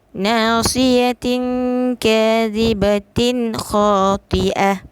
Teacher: Di situ tanwin bertemu dengan kha. Jelas bacaan, tidak dengungnya, nyata je. Tak perlu kita tekan untuk dengung. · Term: Izhar halqi